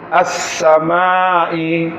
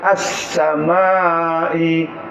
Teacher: Alifnya tetap baris atas. As-samai, tidak ada bunyi lam.